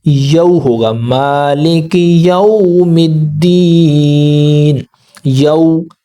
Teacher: वाव साकिन से पहले अगर ज़बर हो तो इसको हमने ज़बर की आवाज़ से वाव के साथ मिलाना है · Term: रूफ़ लीन